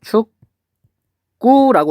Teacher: 얘는 발음하면 축구라고 이렇게 발음이 돼요. 여기 있는 기억이 쌍기억으로 바뀌었어요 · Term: 된소리 되기